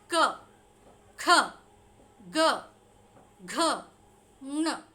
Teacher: क वर्ग का उच्चारण कहाँ से होता है, कंठ से होता है।